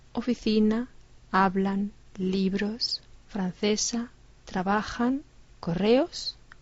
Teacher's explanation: palabras que terminan en vocal o N o S y su acento fónico en la penúltima sílaba